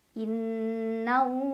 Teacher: lam jalalah dibaca tafkhim karena huruf sebelumnya yaitu nun berbaris di atas, jadi bacanya tebal. Innallah, ada alif lam syamsiyah karena ada alif lam yang menghadapi huruf syamsiyah yaitu lam, maka alif lamnya tidak dibaca, dari nun langsung diidghamkan atau dimasukkan ke Allah.